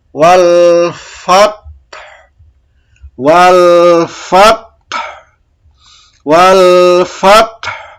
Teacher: bila waqaf suara fat ditekan, fat gitu ya, dan diikuti bunyi ha mati dengan suara rendah